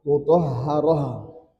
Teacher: Ta marbutah kapanpun dia berhenti selalu diganti menjadi ha sukun. Yatlu suhufam mutahaharah bukan mutahatah.